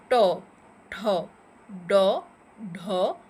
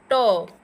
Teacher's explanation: তাহলে কোনো ব্যঞ্জনধ্বনি উচ্চারণের সময় জিভ মূর্ধাকে স্পর্শ করে। ট, দেখো জিভটা উল্টিয়ে উপরের তালুর সঙ্গে গিয়ে লাগছে, মানে আমাদের মুখে যে ছাদটা, সেখানে কিন্তু গিয়ে লাগছে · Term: মূর্ধন্য ধ্বনি